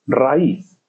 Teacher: Tenemos abierta con cerrada y la cerrada es la tónica, por tanto es un hiato y se separan las 2 sílabas.